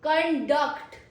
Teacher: There is a stress on the second syllable.